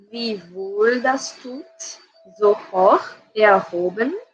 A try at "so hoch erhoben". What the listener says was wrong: So hoch erhoben. This is a close O. It's not hoch, it's hoch erhoben.